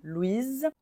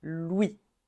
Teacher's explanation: Au masculin, le S est muet